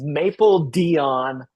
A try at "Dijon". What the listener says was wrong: I think you're supposed to like pronounce the J, like a Dijon. Dijon.